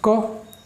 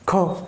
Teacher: क कम आवाज़ निकली, ख ज़्यादा, ग कम, घ ज़्यादा, अंग कम।